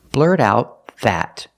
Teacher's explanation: the T and out is a stop T because the next sound is a consonant